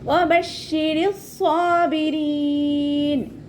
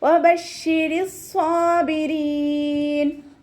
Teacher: റ കെസ്റ എന്ന സമയത്ത് രീ എന്നുള്ള സൗണ്ട് കൊടുക്കാൻ ശ്രദ്ധിക്കുക. സ്വാദ് ഇസ്തിഅലാൻ്റെ ലെറ്ററാണ്, ഇത്ബാക്കിൻ്റെ ലെറ്ററും കൂടിയാണ്. അപ്പോൾ നാവിൻ്റെ മുഴുവൻ ഭാഗങ്ങളും മുകളിലേക്ക് ഉയർത്തിയിട്ട് വേണം തഫ്വീം ചെയ്യാൻ കേട്ടോ.